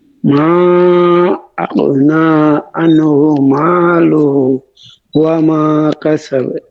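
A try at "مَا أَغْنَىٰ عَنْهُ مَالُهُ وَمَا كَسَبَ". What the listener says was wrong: ماله টানাছে, ماله وما كسب।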